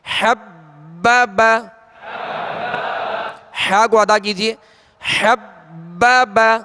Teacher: حبب، ہا کو ادا کیجئے. حبب، اور با مشدد ہے حروف قلقلہ میں سے تو خوب جمع ہوگا.